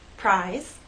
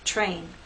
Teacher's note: R is a voice sound but after these three consonant sounds it begins voiceless and then becomes voice as we go into the next vowel sound